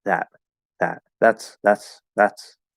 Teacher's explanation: it's a very very light th it's almost not there